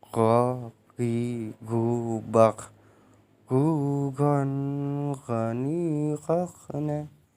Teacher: Huruf ini keluar dari tenggorokan yang terdekat dari rongga mulut. Diucapkan dengan lembut suaranya tanpa mengalir udaranya, yakni go, gi, gu, bak, gu, gon, gani, kakna. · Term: huruf go